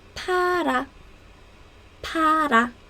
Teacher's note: There is no F sound in Korean, so we just use P sound instead.